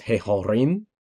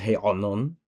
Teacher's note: the accent must not be on the hey or the ayin. It must be on the following syllable.